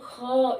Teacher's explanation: फारसी भाषा के अंतर्गत उर्दू आती है, उर्दू के शब्दों में इसे इस्तेमाल किया जाता है। फ, क, ख, जिनके शब्दों के नीचे बिंदी लग जाती है वो उसकी साउंड गले के अंदर से ख इस तरह से आती है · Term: नुक्ता